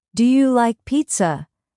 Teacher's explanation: yes, no questions rise at the end